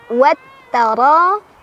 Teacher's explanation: ro-nya dibaca secara tafkhim karena ro-nya berbaris fathah. Jadi ditebalkan ya.